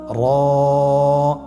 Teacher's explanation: জিহ্বার আগার উল্টা পিঠ তার বরাবর উপরে তালের সঙ্গে লাগিয়ে উচ্চারিত হয়